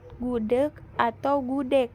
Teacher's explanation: dapat direalisasikan sebagai bunyi G atau bunyi K apabila berposisi di akhir, misalnya gudeg, dilafalkan gudeg atau gudeg.